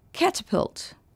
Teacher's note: L'accent tonique est sur la première syllabe.